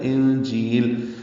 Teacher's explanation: نون ساکن پہ اخفا ہے، آگے جیم آ رہا ہے حروف اخفا میں سے ، اور جی میں یا مدہ ہے، 2 حرکات لمبا کرتے · اخفا ہے، آگے جیم آ رہا ہے حروف اخفا میں سے، اور جی میں یا مدہ ہے، 2 حرکات لمبا کرتے ہیں